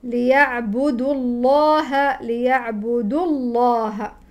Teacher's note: ولفظ الجلاله مفخم لان قبله مفتوح